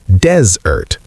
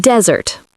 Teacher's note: desert as a noun is pronounced desert. The stress is on the first syllable, dez, desert, like the word dez with ert at the end. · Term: stress on the first syllable